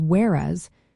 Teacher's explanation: whereas has two syllables pronounced as whereas with the stress on the second syllable. This pronunciation helps emphasize the contrast it introduces.